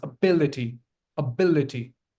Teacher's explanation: You put stress on the second syllable. This is a four syllabic word.